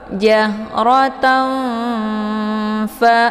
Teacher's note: disamarkan bunyi nunnya atau tanwinnya, siap-siap masuk ke huruf fa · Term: ikhfa awsat